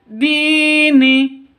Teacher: Dini, di panjang dua ketukan karena ada ya mati diawali dengan kasroh. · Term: mat asli